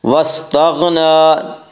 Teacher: नून के ऊपर खड़ा ज़बर है, खड़ा ज़बर को एक अलिफ के बराबर खींच कर पढ़ेंगे